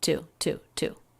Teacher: So even though it's not stressed, that would be tu. It's still said flatly and quickly, tu, tu, tu. It's not reduced.